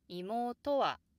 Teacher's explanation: pitch and the high pitch could get a little bigger also the accented sound to could be a bit emphasized with a raised pitch